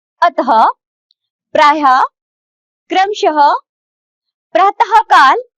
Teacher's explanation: विसर्ग का उच्चारण हल्के रूप में हु ध्वनि के समान होता है